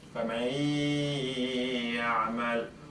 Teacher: So I take part of the nun and I put it in the ya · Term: idgham bi-ghunna